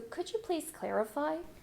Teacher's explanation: This is a yes-no question, so for yes-no questions, you usually end with a rising intonation.